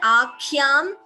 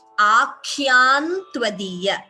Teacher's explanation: Here Akhyam, Anuswara followed by Ta. You could either chant the Anuswara completely as Akhyam tvadiya, or optionally you can combine the Sandhi and chant it as Akhyan tvadiya. So instead of Anuswara you get N.